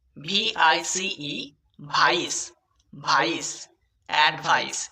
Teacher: সিই এর উচ্চারণ হবে দন্ত স, এখানে কিন্তু পাক্কা দন্ত স এর উচ্চারণ করতে হবে